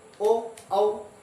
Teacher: ओदोतो कंठोष्ठम अर्थात ओ और औ, ओ और औ का जो उच्चारण होगा हमारा कंठ से और ओष्ठ से, ओ औ, इस प्रकार से।